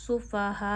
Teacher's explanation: हा जो है वो गले के आखिर से अदा होता है